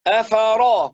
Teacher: ليش عم برقق الراء الراء مفخمه